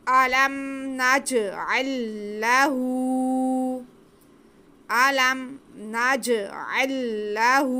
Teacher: पहला लाम साकिन है, दूसरे लाम पे ज़बर है, तो नज अल्लाहु पढ़ना मुश्किल था, इसलिए यहाँ पे शद लगा के दोनों लामों को एक ही किया गया है।